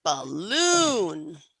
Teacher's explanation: you notice I really have that long length on that second syllable